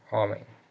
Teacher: But at the end of a word, and M or N takes an NG sound